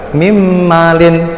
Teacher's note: jadi huruf nunnya dihilangkan, dimasukkan ke huruf mim, jadi langsung mimmalin. Mimmalin, dengung ya, dua ketukan, mimmalin. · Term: idgham biguna